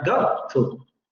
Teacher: el fonema dental principalmente, no todos estos fonemas, solamente el dental, va a glottalizarse en prácticamente todas las palabras al final de sílaba. Quiere decir que deja de pronunciarse, que solamente ocurre una pequeña pausa para pronunciar la palabra. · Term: glottalización